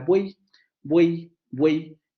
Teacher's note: tenemos 3 vocales que se pronuncian de manera continua, sin interrupción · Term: triptongo